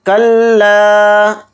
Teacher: لام پہ تشدید ہونے کی وجہ سے، لام کے ساتھ الف مدہ ہے تو لام الف زبر لا تھوڑا کھینچ کر پڑھا جائے گا